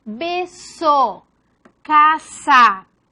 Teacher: Alveolar sorda, la S.